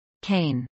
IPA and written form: kˈeɪn (cane)